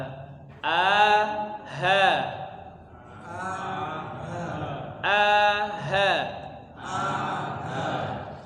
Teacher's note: paling dalam lagi tenggorokan bagian bawah ada huruf Hamzah Hamzah dan Ha